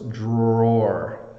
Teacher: it looks like two syllables but it's really almost sounds like one